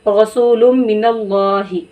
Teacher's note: तो अगर आप ऐसे पढ़ दिए रसूलुम मिनल्लाहि, ऐसे पढ़ दिया, गुन्ना आपने यहाँ नहीं किया, सिर्फ लाम को मीम से मिलाकर पढ़ दिया